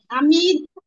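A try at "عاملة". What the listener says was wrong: আইনের মাখরাজটা একটু ঠিক করেন তো আপু। আইন হলকের মধ্যখান থেকে।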